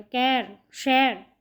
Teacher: ਜਦੋਂ ਅਸੀਂ ਹਹ ਹਹ ਦੀ ਇੱਥੇ ਅਸੀਂ ਉਦਾਹਰਨ ਲੈਦੇ ਆਂ ਕਿ ਜਦੋਂ ਅਸੀਂ ਹਹੇ ਦਾ ਉਚਾਰਨ ਪੂਰਾ ਕਰਨਾ ਹੋਵੇ ਜਦੋਂ ਪੰਜਾਬੀ ਦੇ ਵਿੱਚ ਹਹ ਬਿਲਕੁਲ ਫਰੰਟ ਤੇ ਅੱਗੇ ਲੱਗਦਾ ਹੈ ਤੇ ਅਸੀਂ ਉਸਦਾ ਉਚਾਰਨ ਪੂਰਾ ਕਰਦੇ ਆਂ ਹਾਥੀ ਪਰ ਜਦੋਂ ਹਹ ਵਿਚਕਾਰਲੇ ਹਿੱਸੇ ਵਿੱਚ ਆ ਜਾਵੇ ਤੇ ਅਸੀਂ ਉਹਦਾ ਉਚਾਰਨ ਐ ਵਾਂਗ ਕਰਦੇ ਹਾਂ